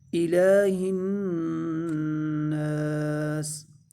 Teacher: ہناس، ہا کو نون کے ساتھ ملائیں گے، اور نون مشدد پر ہمیشہ غنہ ہوتا ہے، اور نون کو لمبا بھی کریں گے ایک الف کے برابر، کیونکہ نون الف زبر نا، الف مدہ ہو رہا ہے، اور سین کو ساکن کر دیں گے، اس پر وقف کریں گے تو الہ الناس۔